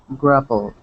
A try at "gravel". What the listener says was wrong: Okay, give me a good V sound. V. Gravel. Gravel.